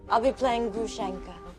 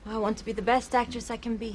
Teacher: she has that characteristic breathiness